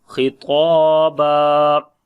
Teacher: ta we long due to alif madda, and ba also we long when we stop